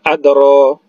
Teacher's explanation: huruf dal ini ada huruf qalqalah sugro. Karena huruf qalqalah ini berada di tengah kata, maka dia dikecilkan saja. Wa ma adro, ro-nya dua harakat karena mad asli atau mad tabi'i alif.